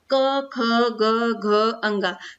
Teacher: यहां पर बोलने का स्थान है कि इनको हम कंठ से बोलते हैं गले से बोलते हैं